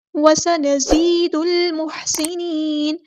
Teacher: سین کی سیٹی واضح کریں گے، زا کو سختی سے ادا کریں گے